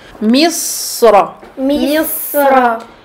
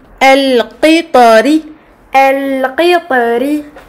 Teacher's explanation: lorsque la lettre ra est emphatique, la gorge est plus resserrée que lorsque le ra est aminci. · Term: ra emphatique